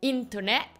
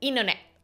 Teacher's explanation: Internet vous allez pas dire Internet vous allez dire internet donc sur ce mot vous avalez le T